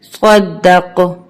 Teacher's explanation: اب قاف پہ ہماری آواز پلٹ کر آئے گی کیونکہ قاف حروف قلقلہ کا حرف ہے